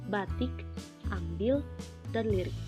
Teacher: direalisasikan seperti bunyi I besar apabila berada pada silabel tertutup atau silabel berkoda